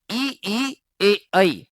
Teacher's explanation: ई ए ऐ जब बोलते हैं तो जीभ का आगे का भाग ज्यादा प्रभावित होता है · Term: अग्र स्वर